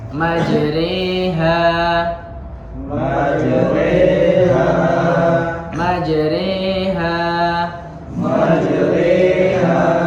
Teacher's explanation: Jadi pengucapannya itu dimiringkan. Jadi tidak dibaca Bismillahi majraha wa mursaha, tapi dimiringkan seperti pengucapan majri · Majra dia diucapkannya miring, menjadi hampir ke kasroh, i. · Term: imalah